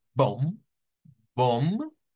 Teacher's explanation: se unen dos consonantes que son de tipo labial